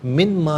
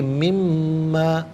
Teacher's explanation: نون ساکن کو میم کے ساتھ ملایا ہے، اور میم کی آواز کو غننے کے ساتھ ادا کریں گے، من ما نہیں بلکہ مما۔